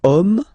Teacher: man okay but then it starts with Ash as in French Ash is not pronounced so the first sound that we hear is O